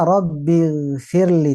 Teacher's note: Saat membaca Robbil Firli, ro-nya tidak lagi tebal.